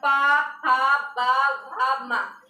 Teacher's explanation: जब हम लोग प फ ब भ बोलते हैं तो पा फा बा भा मा, ऊपर वाला ओठ और नीचे वाला ओठ आपस में क्या करता है, सटता है। तो पवर का उच्चारण स्थान क्या होगा, ओठ। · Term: पवर्ग